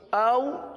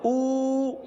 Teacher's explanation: او کو نرمی سے پڑھا، او کو ایک الف تک کھینچ کر پڑھا